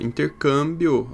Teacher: Quando a gente faz a separação silábica, a gente pode ver que a sílaba tônica está no cam. E ela é terminada em ditongo.